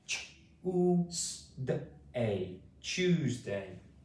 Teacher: The t makes a kind of ch sound here.